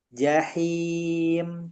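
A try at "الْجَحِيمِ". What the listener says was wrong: Hati-hati berubah jadi jahim. Hin. Him. Gitu. Jangan hin. Beda ya.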